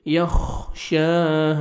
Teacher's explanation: شین کو 1 سیکنڈ کھینچنا ہے، کھڑا زبر ہے، اور الف مدہ 1 سیکنڈ ہا کو بھی کھینچنا ہے آپ نے.